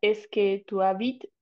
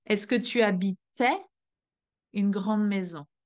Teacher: Then you stop to the T sound. And when you go to the imperfect, the T sound is pronounced and then you have the sound E that is following